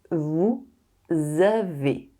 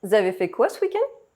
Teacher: [z] is the sound of the liaison, the link, between “vous” and the verb that follows it. This liaison is compulsory.